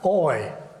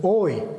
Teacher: King Charles has the more open RP vowel oi while Prince Harry has the less open oi of SSB